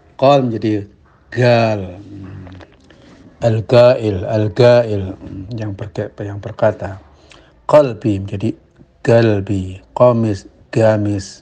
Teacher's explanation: Kemudian di Yaman malah qaf ini menjadi g, jadi qal menjadi gal.